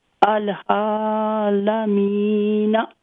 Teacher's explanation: ہاں تو یہاں پہ کیا رول ہے؟ اس پہ عین پہ فتح مقدر ہے، اس کو لمبا کریں گے، اور میم کو بھی تھوڑا لمبا کریں گے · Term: مد اصلی طبیعی